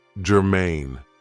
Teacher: this is 2 syllables, and the stress is on the second syllable